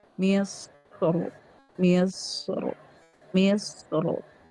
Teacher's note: ketika waqaf pada kata misru itu lebih utama tebal